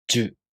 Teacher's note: To pronounce Ju, the tongue moves from the [dʑ] sound to the [ɯ] vowel.